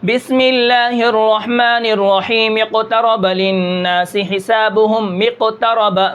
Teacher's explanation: میم کو قاف کے ساتھ ملا دیں گے، الف ختم ہو جائے گا